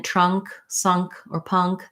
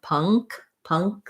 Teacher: um sound before k like in trunk sunk or punk because the back of your tongue lifts for that k sound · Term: ng sound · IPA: /ŋ/